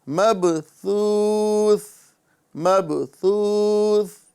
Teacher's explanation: یوم یکون الناس کالفراش المبثوث، سا کی جگہ سا ہی ادا کرنا ہے، سین ادا نہیں کرنا ہے، مبسوس نہیں بولنا ہے، بلکہ مبثوث